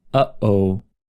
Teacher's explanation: A glottal stop is created by abruptly closing your vocal tract, like in the expression uh-oh.